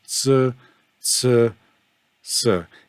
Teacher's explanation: it's between a sh and an S but the mouth is in a smiling position and the tongue is flat